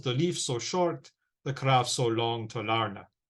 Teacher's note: we have an alternation of unstressed and stressed syllables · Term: iambic pentameter